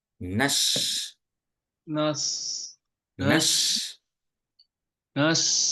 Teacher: nas itu lidahnya bagian tengah itu agak ke atas